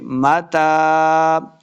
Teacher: تا کے اوپر کھڑی زبر ہے، اس کو 2 حرکات لمبا کرنا ہے، ملا کے میم کو تا کے ساتھ ملانا نہیں ہے، میم کے اوپر صرف زبر ہے، تا کے اوپر کھڑی زبر ہے، ملنا نہیں ہے، تا کے اوپر کوئی شد وغیرہ نہیں ہے۔